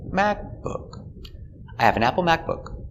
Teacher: is important but the intonation goes down at the end so we stress mac and the intonation goes down book macbook